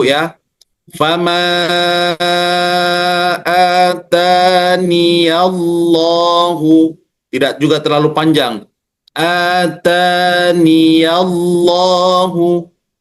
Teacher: Maka membaca kasrah nun dan membaca panjang dua harakat. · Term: dibaca wasal